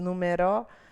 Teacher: Então, proparoxítona. Se fosse oxítona, ia ser numeró, né?